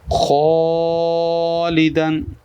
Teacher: الف بھی موٹا کیونکہ خا موٹے حروف میں سے ہے